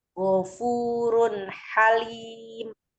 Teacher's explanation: Ghafurun runha itu ada domah tanwin. Setelahnya ada ha jadi dibaca izhar halqi yaitu jelas. · Halim itu ada matobiyya dibaca 2 harokat karena sebelumnya kasroh.